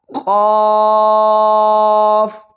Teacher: زبان جہاں سے زبان شروع ہوتی ہے، زبان کی جڑ اور تالو کا نرم حصہ